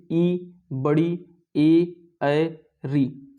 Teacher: इसका उच्चारण आपके जीभ के अगले भाग से होता है, इसलिए ये अग्र स्वर है,